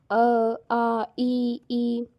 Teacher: जिन वर्णों के उच्चारण करते समय किसी अन्य वर्ण की सहायता नहीं लेनी पड़ती, इनके उच्चारण के समय हवा मुख से बिना किसी रुकावट के निकलती है, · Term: स्वर